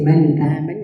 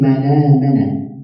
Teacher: The vowel of the hamza is transferred to the letter before it. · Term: naql